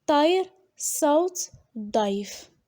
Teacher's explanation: on remarque dans le parler de Jbala que les voyelles se réalisent avec le trait plus arrière en contact d'emphatique de ces consonnes, à savoir D, T, S, par exemple, Tair, Saut, Daif.